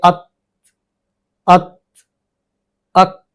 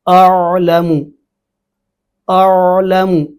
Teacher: عین جو ہے اس میں نہ تو آواز بند ہوتی ہے، نہ زیادہ جاری رکھی جا سکتی، تو اس کے اندر صفت توسط ہے، جیسے اعلم اعلم اتنی تو جاری ہو سکتی ہے، زیادہ جاری کریں گے تو اس میں تکلف ہوگا۔